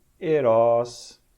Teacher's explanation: Um E fechado breve. E aqui, Ros.